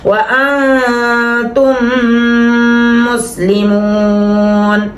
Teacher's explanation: لکم الدین فلا تموتن, شد کا غنہ جو ہوتا ہے نا وہ سخت ہوتا ہے جہاں شد آ رہی ہوتی ہے, اور جزم کا غنہ اور دو زبر دو زیر دو پیش کا غنہ جو ہے اخفا کا غنہ ہوتا ہے. الا وانتم, اب میم کے بعد میم آ رہی ہے غنہ ہوگا